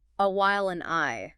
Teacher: the D elides with the vowel. It's a perfect illustration of how the sound that comes after a word can change how the end of that word is pronounced.